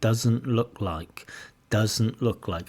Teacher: Oh, sorry, she drops the T. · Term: elision